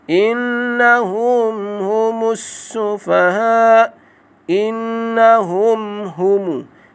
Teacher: Innahum, inna dibaca dengan dengun 2 harakat, iaitu wajib al-gunnah.